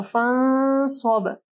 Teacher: ٹھیک ہے، صاد ہے، یعنی یہاں پہ صاد جو ہے اخفا حروف میں سے ہے، تو یہاں پہ اخفا غنہ ہوگا، اور صاد کیونکہ موٹا حرف ہے تو غنہ جو ہے موٹا ہوگا